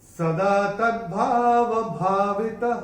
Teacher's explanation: चरण की समाप्ति पे जो विसर्ग आ रहा है उसका उच्चारण केवल और केवल ह ही होगा, क्योंकि ये चरण की समाप्ति पे आ रहा है।